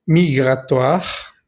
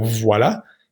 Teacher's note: Des politiques de restriction migratoire. Recordemos que la OI suena wa, como voilà.